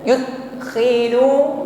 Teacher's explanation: huruf dal sukun nampak sifat qalqalah, maka jangan ragu-ragu untuk memantulkannya ya. Yud jangan ditahan.